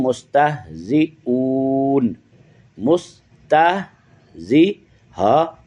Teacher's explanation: سے ادغام ہے اور تشدید ہے، انما نحن مستہزئون، مستہزی ہا، یہ جو ہا جو ہے یہ آخری حلق والی ہا ہے